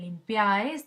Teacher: Tenemos deslizada, vocal o núcleo, deslizada. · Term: triptongo